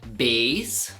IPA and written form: beɪs (bass)